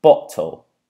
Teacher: the glottal noise that comes in is actually placed right before the T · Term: glottal reinforcement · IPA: ['bɒʔtəl]